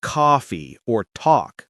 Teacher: Words like coffee and talk have a very open a sound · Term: open aw sound